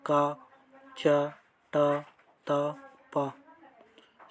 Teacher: ऐसे वर्ण जिनके उच्चारण में मुंह से कम वायु निकलती है, जैसे का, च, ट, त, प। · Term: अल्पप्राण